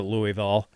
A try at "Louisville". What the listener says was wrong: Louisville. You just round it off. Louisville. Not Ville. Like VUHL. Louisville.